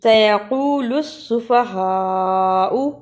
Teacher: لام کو سین سے ملانا ہے